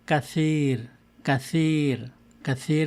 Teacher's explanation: নিচের দাঁত দিয়ে জিভাকে উপরের দাঁতের সাথে টাচ করতে হবে, মানে আপনার জিভার আগাটা সামান্য বাইরে বের করে উপরের দাঁতের সাথে স্পর্শ করতে হবে। তখন আপনি বলবেন সা, সা।